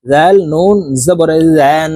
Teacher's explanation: নুনের উপরে তাসদিদ আছে এই কারণে এই জাল তাসদিদওয়ালা নুনের সাথে নাকের বাসি থেকে গুন্না করে পড়তে হবে গুন্নাটি 3 সেকেন্ড পরিমাণ ধরে রাখতে হবে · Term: ওয়াজিব গুন্না